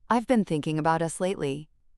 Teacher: The pause after thinking and emphasis on us signals a significant conversation.